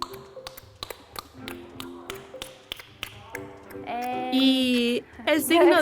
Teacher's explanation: es un click palatal la lengua se encuentra plana y se tira al paladar